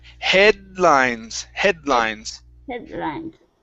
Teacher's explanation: it's half of the D sound, then into the L